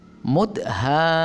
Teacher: Mudhammatani. Hanya dibaca panjang 6 harokat karena ada bertemu dengan huruf mim yang bertasdid dalam satu kata